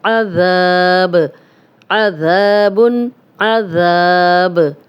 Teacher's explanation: ذا الف مدہ ہے، ذال نرم بھی ہے اور سیٹی کی آواز نہیں آنی چاہیے، 2 حرکات لمبا کریں گے ، اور تنوین ہے 2 پیش، تو 2 پیش پہ جب